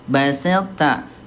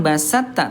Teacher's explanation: sempurnakan sifat tebalnya to baru ke ta ya. Jadi baselta bukan basatta tapi baselta.